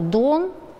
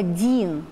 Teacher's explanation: Например, возьмем слово «дон», где у нас «д» твердый, и слово «дин», где у нас «д» мягкий, потому что после него стоит уже гласный «и». Это нормальное явление, и это явление можно считать универсальным.